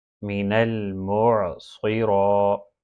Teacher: صاد اور را دونوں ہیوی ہیں، ان کو موٹا پڑھیں